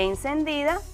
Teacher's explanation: encendida es una palabra llana la fuerza de pronunciación recae en la penúltima sílaba